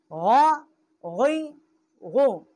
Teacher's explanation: اس کا مخرج جو ہے ادنائے حلق، جو منہ کی طرف والا حلق کا حصہ ہے وہاں سے اس کا مخرج ہے غین کا۔